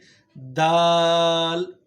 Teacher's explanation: زبان کا سرا جب ثنایا علیہ کی جڑ کے ساتھ ٹچ ہوتی ہے تو یہاں سے دال ادا ہوتا ہے